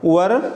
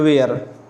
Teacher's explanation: And where you see the lips are spread, where. But in वर में lips ज़रा गोल होते हैं, round होते हैं